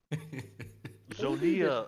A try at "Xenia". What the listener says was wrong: Xenia. Xenia. It's a silent kind of.